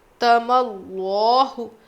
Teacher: لفظ اللہ کے لام سے پہلے زبر تو اسی کو موٹا پڑھنا ہے